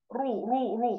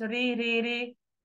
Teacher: الرا هنا لو فيها ضمه تبقى ايه رو رو رو مش ري ري ري